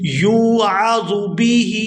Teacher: یہاں یا کو واو مدہ کے ساتھ ملائیں گے تو کھینچ کر ادا کریں گے،